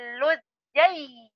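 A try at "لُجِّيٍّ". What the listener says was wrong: Jangan lujay, luji, luji. Ah, luji.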